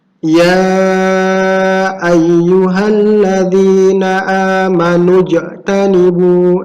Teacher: Di sini kalian harus memantul, ya, yang disebut dengan qalqalah